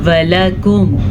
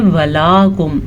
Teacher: लाम के ऊपर ज़बर है तो इसको हम खींच के नहीं पढ़ सकते। इसी तरह वाव को भी, वाव ज़बर वा, लाम ज़बर ला, वला काफ पेश मीम कुम, वलाकुम वलाकुम।